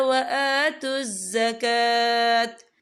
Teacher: کاف کے پر کھڑی حرکات ہے، تو ہم اسے 2 یا 3 حرکت کے برابر کھینچ کے پڑھیں گے